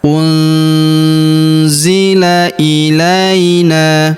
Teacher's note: huruf nun sukun bertemu huruf zi, maka nun sukunnya melebur ke huruf zi, kita baca dengung dan samar. Dengungnya kita tahan 2-3 harokat.